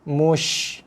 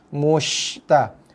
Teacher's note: Jangan kita mengontotkan, memendekkan bunyi shin tu. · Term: tafashi